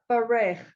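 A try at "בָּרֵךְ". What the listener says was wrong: You're doing silent. You're doing the yud.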